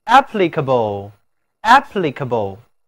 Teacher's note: 字母▁A▁读倒写的元音▁a，▁请跟我来读▁applicable